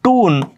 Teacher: आपण मराठीच्या दीर्घ मराठीच्या दीर्घ उकारासारखं टून असं जर म्हणलो तर आपण अमेरिकेच्या बाजूला जातो आणि आपण शिकताना रिसव् प्रोनन्सिएशन शिकत असताना आपल्याला याला टून न